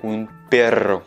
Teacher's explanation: Donc, tu peux voir que j'exagère, j'accentue un petit peu plus la prononciation du R parce que c'est un double R